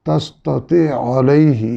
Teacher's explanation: یہاں عین ساکن کا عین متحرک میں ادغام ہو رہا ہے۔ تستطیع میں عین ساکن پچھلے لفظ میں ہے اور علیہ اگلے، یعنی علیہ کی عین جو ہے اگلے لفظ کا پہلا حرف ہے۔